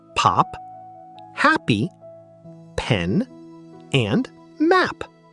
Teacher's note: The voiceless bilabial plosive sound, p, as in pop, happy, pen, and map.